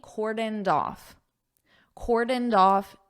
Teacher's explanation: Notice how I take this d and I connect it onto off.